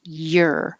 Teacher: this is starting in a very high y position